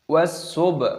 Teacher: Baknya berharokat sukun, pantulkan suaranya